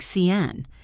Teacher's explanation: The word can is usually reduced to a schwa. It sounds like cn.